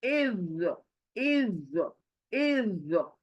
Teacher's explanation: इज, जो जब बोलोगे ना मुंह गोल होगा आपका, ऐसे ना मुंह अपना अंदर से हॉलो होगा, हॉलो, और होंठ गोल हो जाएंगे